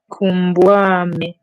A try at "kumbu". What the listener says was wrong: Ekumbwame. Remember E in Kikongo. Ekumbwame.